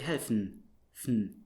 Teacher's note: For instance, if you have a word like helfen, to help, you write, at the end you write en, but you would never, well, at least in standard German, you would not produce the e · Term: schwa vowel